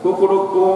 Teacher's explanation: तो पहला वाला कु जो बोलता है वो 1 मात्रा, कुड़ू जो बोलता है वो 2 मात्रा, और ऊ जो बोलता है वो 3 मात्रा। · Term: ह्रस्व दीर्घ प्लुत